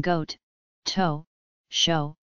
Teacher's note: a conservatively backed pronunciation of the long O sound in goat, toe, show